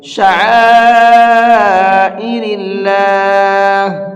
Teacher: شعائر اللہ، یہاں یہ بڑا مد بنا ہوا ہے، اس بڑے مد کو 4 سے 5 الف کی برابر کھینچ کر کے پڑھیں گے · میں نے اللہ کے لام کو باریک کر کے پڑھا ہے